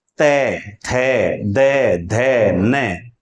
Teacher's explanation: तय, थे, दे, आपकी जीभ आपके दांतों को स्पर्श कर रही है, इसलिए इन्हें हम दांत, इनका उच्चारण स्थान हुआ और इन्हें हम कहेंगे दंते।